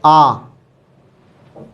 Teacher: जब हम इसका उच्चारण करते हैं आ का, तो इसमें हमारा मुख द्वार पूरा खुलता है। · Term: विव्रत स्वर